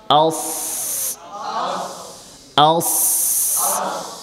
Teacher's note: জিহ্বার আগা, সামনের নিচে 2 দাঁতের পেট। আস, আস। এটা হচ্ছে মাখরাজ বের করার পদ্ধতি। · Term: সদের মাখরাজ